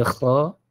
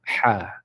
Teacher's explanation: Kalau ha pun sama juga, cumanya ha ini dia ada angin. Ha dipedaskan, maksudnya dinipiskan.